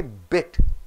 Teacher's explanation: The vowel is not sounded in full, it is squeezed. The sound of the vowel is less stressed. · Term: lax vowels